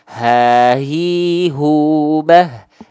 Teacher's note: tenggorokan paling bawah atau pangkal tenggorokan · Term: H besar